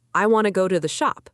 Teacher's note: in fast spoken English, small words like to sound like ta